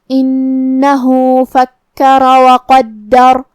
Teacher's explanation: کلمت قدر میں قاف کو ہم بھاری آواز میں پڑھیں گے. آخری میں حرف الراء پہ رکیں گے تو اس پہ جزم سے رکیں گے تو را کا حکم ہے تفخیم. ہم را کو موٹی آواز میں ادا کریں گے.